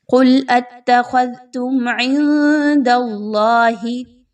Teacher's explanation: میم ساکن کے بعد عین کا حرف آ رہا ہے، یہاں پر اظہار شفوی کیا جائے گا، یعنی آپ نے میم پر کسی طرح کا غنہ نہیں کرنا